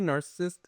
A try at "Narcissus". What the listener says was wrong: Narcissus. There's no T in there, first of all. Narcissus. Narcissus.